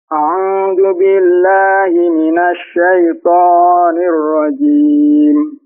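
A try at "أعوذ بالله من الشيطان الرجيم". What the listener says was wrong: A'udzu billahi minasy syaitanir. Nya dua harakat saja, jangan syaitanir rajim. Kepanjangan dikit.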